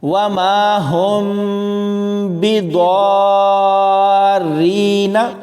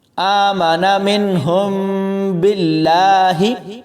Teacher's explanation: تو ناظرین، سب سے پہلے اخفاء شفوی کی بات کرتے ہیں۔ اگر میم ساکن کے بعد حرف با آئے گا تو وہاں ہم نے غنہ کرنا ہوگا، یعنی غنہ خفیف کرنا ہوگا، تھوڑی دیر میم کے اوپر رکنا ہے۔